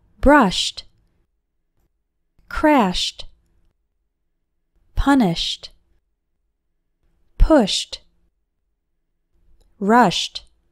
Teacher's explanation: We also pronounce ed like t after verbs ending with an sh sound.